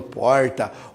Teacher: é retroflexo né que é com a ponta da língua para trás